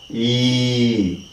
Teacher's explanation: when we say e the tongue is lifted maximum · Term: close sounds, close